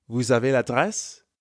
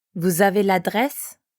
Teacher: Because vous ends in S, we have a liaison between vous and avez.